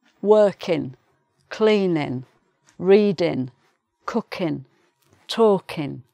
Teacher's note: The g is dropped, so you just get in